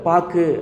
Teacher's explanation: எப்படின்னா, அவ்வெழுத்து சொல்லின் முதலிலும் இடையிலும் வரும்போது முழுமையாக ஒலிக்குது. சொல்லின் இறுதியில் வரும்பொழுது ஒரு மாத்திரைக்கு பதிலாக அரை மாத்திரை அளவே ஒலிக்கிறது. · அந்த ஊங்கிற வார்த்தை வந்து ஒரு மாத்திரையிலேருந்து குறைந்து அரை மாத்திரையாக ஒலிக்கிறது. இதுதான் குற்றியலுகரம்.